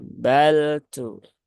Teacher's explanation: Nah, maka ini nggak tepat karena lam dia tidak ada sifat syiddah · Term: lam sukun